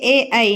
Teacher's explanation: కంఠం మరియు దౌడ సాయంతో పలుకుతాం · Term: కంఠ తాలవ్యాలు